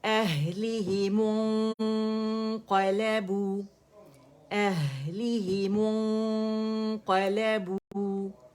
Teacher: قاف کے مخرج پہ جائیں گے پھر کاملہ گریڈ کا اخفا کمپلیٹ کریں گے قاف کو فرملی ادا کریں گے